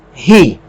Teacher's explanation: O iota tem som de I, mas com uma aspiração forte ele vai ser pronunciado como RI.